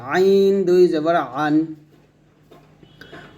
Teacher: আইনটা গলার মাঝে চাপ দিয়ে বলতে হবে